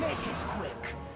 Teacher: put a lot of emphasis on the last syllable